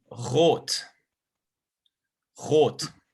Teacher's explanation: R a lot of the time is in the back of your throat